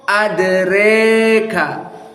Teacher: the second adroka not said with fathah but al imalah alkubro